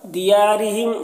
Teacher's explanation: دیارہم یا میں الف مدہ ہے، ایک الف کے برابر کھینچ کر پڑھیں گے اور را کو باریک پڑھیں گے۔ ہم کے میم میں اظہار شفوی ہو رہا ہے، اسے جلد پڑھیں گے